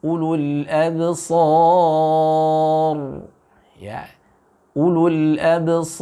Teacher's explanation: ra-nya dibaca dengan tafkhim